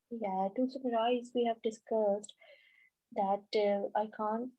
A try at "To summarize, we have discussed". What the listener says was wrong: To summarize, we have discussed, okay, let's say to summarize, we have discussed, and then there is a longer pause after that. A longer pause was placed here. It's not good. So what you should have done is you should have said, to summarize, we have discussed blah blah blah. Okay, so you shouldn't give a pause after we have discussed. You should give a pause after to summarize.